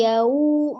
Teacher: monyongkan dulu ketika waw sukun supaya tidak terdengar yau ya. tidak O, tapi U.